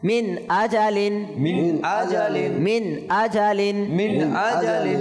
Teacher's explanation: যেহেতু আমরা দেখতে পাচ্ছি নুন সাকিন পরে ইজাহার হরফ আসছে সেহেতু আমরা কি করব ইজাহার করে পড়বো গুন্না না করে পড়বো